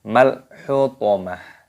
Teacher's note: Ketika tanda waqaf maka berhenti, diganti dengan huruf ha, maka dibaca malhutomah. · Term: Taknya marbutoh